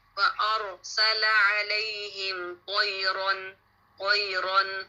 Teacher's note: وَأَرْسَلَ کا را بھی موٹا پڑھیں گے کیونکہ را سکون ہے اور اس سے پہلے حمزہ پہ فتح ہے · را پہ فتح تعین ہے تو اس کو آپ نے ہیوی پڑھنا ہے